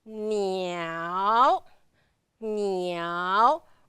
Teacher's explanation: very dramatic going down and up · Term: the third one